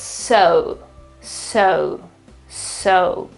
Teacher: So again, the accent is on the first syllable, so the O, but the O sound is not a normal O, but it is schwa and U.